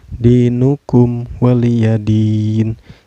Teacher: Maka ini dihukumi mad arid li sukun. Cara bacanya dipanjangkan boleh 2 harakat, boleh 4 harakat, dan boleh 6 harakat ya.